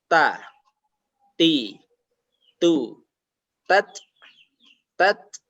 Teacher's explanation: Jadi ada aliran nafas lewat mulut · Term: hamas